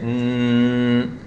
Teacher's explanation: We're going to put a sukoon on it, but we make it long. We say n instead of nu or nun. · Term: nun with shadda